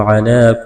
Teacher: علی کڑا زبر ہے کہ الف کے برابر کھینچنا ہے، اس یا کو نہیں پڑھیں گے۔